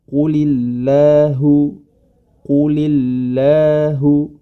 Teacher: apabila huruf lam tersebut didahului dengan huruf yang berharakat kasrah, maka huruf lamnya menjadi tipis